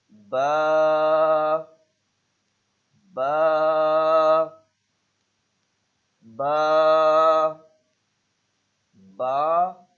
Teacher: دونوں ہونٹوں کی اندرونی تری کے ملنے سے ادا ہوتا ہے